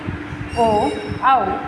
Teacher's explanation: जिनका उच्चारण कंठ और ओठों के द्वारा होता है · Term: कंठ होष